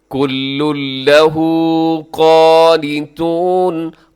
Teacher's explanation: یہاں ادغام ہوگا بغیر غننے کے، یعنی نون کا اس میں ساؤنڈ نہیں ہوگا، نون کی آواز نہیں ہوگی۔ · ساؤنڈ نہیں ہوگا، نون کی آواز نہیں ہوگی۔ کل لہ قانتون، قاف موٹا پڑیے گا، قاف کو اپنے باریک نہیں کرنا